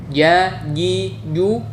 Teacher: Tengah lidah harus benar-benar menempel pada langit-langit di atasnya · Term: huruf Jim